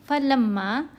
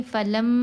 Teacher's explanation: جب ہم پڑھیں گے فلم، یہ لم کی جو آواز ہے یہ ناک سے آ رہی ہے، یہ غنہ ہے